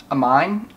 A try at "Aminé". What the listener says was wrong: E with the thing is A. The A sound. Aminé. Aminé.